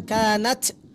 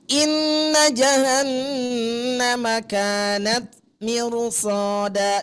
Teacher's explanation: Hati-hati Bu. Taknya ketika sukun jangan kanat, tapi inna jahannama kanat mirsada. Desisannya itu sedikit tipis.